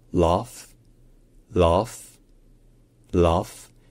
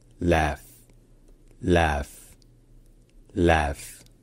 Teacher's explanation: En général, en Angleterre, il se dit A, donc un A qui est long et qui est plutôt à l'arrière de la bouche. · en anglais américain, ou australien, ou canadien, c'est plutôt A, donc un A qui est court et qui est plutôt à l'avant de la bouche. Un petit peu intermédiaire entre un A et un E d'ailleurs.